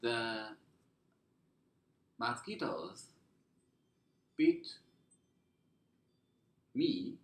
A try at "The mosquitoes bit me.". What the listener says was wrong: Ah, no, mosquitoes bit me. Excellent. Okay, good sentence.